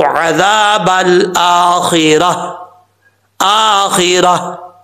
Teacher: تو وقف کرنے کی صورت میں تا کو، اس گول تا کو ہا سے بدل دیں گے اور اس ہا کو ساکن کر کے پڑھیں گے